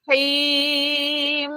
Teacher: Sebab bila kita sebut him, huruf terakhirnya mim. So bunyi mim itu sifatnya kena masuk dalam hidung.